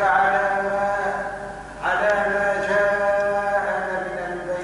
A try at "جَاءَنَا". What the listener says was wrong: جاءنا ممدودا